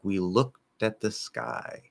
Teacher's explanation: that K can kind of get held for a second